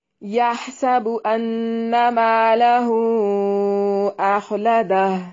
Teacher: ہا کو واضح نکالنا ہے لیکن ہلانا نہیں ہے، سین کو باریک سیٹی سے ادا کرنا ہے۔